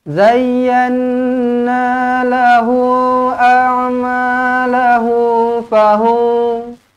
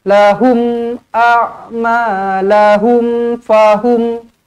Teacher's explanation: Semuanya izharu syafawi. Matikan betul-betul dengan jelas.